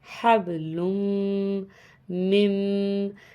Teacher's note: لام کو میم سے ملائیں گے، غنہ کریں گے، حبل مم، یہاں پر میم کے بعد جو حروف ہے اس پہ جزم ہے، اور جزم کے بعد جو حروف ہے اس پہ تشدید ہے، تو اس کنڈیشن میں ہم تشدید والے حروف سے دونوں حروف کو آپس میں ملائیں گے۔